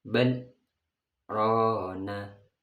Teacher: baca saktah itu stop tanpa nafas